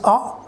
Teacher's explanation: half close we use our central part of our tongue then while producing this ah the lips are unrounded